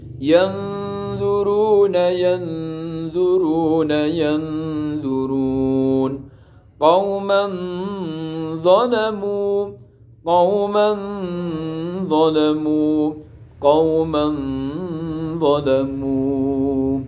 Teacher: Itu ikhfa hakiki, menyamarkan panjangnya samar itu 2 harokat langsung pada huruf ikhfa hakiki yang 15.